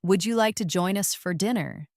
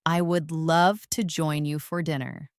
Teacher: First, the question with a rising tone. Would you like to join us for dinner? And now the answer with a falling tone.